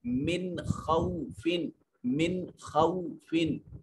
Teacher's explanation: من میں نون ساکن ہے، اس کے بعد یہ خا حروف حلقی میں سے ہے، لہٰذا یہاں نون کو ظاہر کر کے پڑھیں گے۔ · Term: اظہار